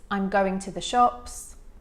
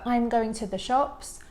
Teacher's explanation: the content words are going and shops. I articulated them, I stressed them a little bit more than the other words